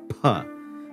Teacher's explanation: P is unvoiced, but you do have the aspiration. You do have that puff of air.